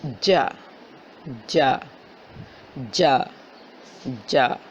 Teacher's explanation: آپ کی زبان جب آپ جیم کی آواز نکالتی ہیں تو آپ کی زبان کا درمیان والا حصہ آپ کے اوپر تالو سے لگتا ہے